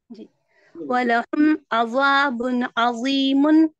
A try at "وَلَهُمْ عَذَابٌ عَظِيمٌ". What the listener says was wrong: عظا نہیں، عذا، ذال باریک. ہاں ذال باریک ذا موٹا.